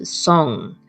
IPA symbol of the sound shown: ŋ